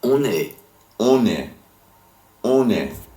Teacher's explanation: Also notice that because the verb form est, begins in a vowel, la liaison has to happen between it and on est. You can clearly hear the N sound.